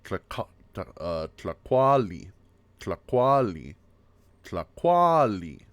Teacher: in Nahuatl, the stress is always on the second syllable